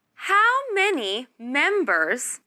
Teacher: this is a question beginning with how so your voice should go down at the end